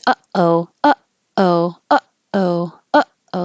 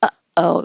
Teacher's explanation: the glottal stop is a glottis closing, so you can feel it in your throat. You're stopping the airflow at before it even comes up.